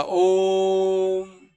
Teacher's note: भी लंबा हो जैसे हम बोलेंगे ओम है ना यह देखो ओम में जो ओ है उस ओ को लंबा करके बोला जाता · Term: प्लुत उच्चारण